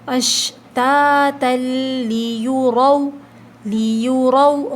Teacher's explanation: را کے اوپر زبر ہے نا تو ہم موٹا پڑھیں گے